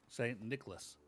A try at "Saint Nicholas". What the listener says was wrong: Yeah, you kind of need to emphasize the nickel a little more.